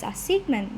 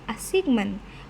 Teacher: the deletion of the final T which is very weak and unreleased in English making it easy for Indonesian learners to miss.